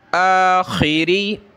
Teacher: खे जो है वो अरबी में नहीं होता, खा होता है, गले से निकालें , आखिरी,